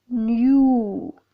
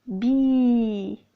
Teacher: the lips are rounded in the word 'new' /njuː/ but spread in 'bee' /bi:/